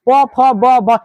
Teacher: प वर्ग, प फ ब भ इत्यादि बोलते समय, प वर्ग को बोलते समय हमारी दोनों ओठें सट जाती है, हम इसे ओठ से बोलते हैं, क्योंकि आप जब बिना ओठ सटाए हुए प वर्ग को नहीं बोल सकते, इसीलिए प वर्ग का उच्चारण स्थान हो जाएगा ओठ।